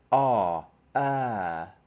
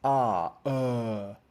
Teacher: is darker um in tone H that's a dark sound right what you want is for the first sound to be darker and the second sound to be brighter